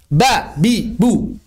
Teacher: Bagaimana cara mengucapkan ba. Maka tidak boleh ada hams.